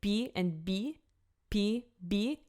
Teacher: it's not P and B they're less aspirated